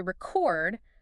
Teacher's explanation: stress on the second, that's the verb to record something